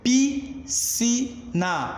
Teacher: Já em piscina, eu não pronuncio o S, senhores. Aqui ocorre o fenômeno do dígrafo, que é o encontro de duas letras e um único som.